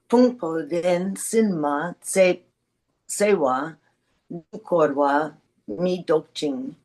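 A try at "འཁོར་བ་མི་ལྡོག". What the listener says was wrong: Really heavy prenasal there. Korwa Mindok.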